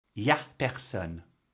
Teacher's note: First, the N apostrophe. It's in the subtitles, I know, but it is nowhere to be found in the audio.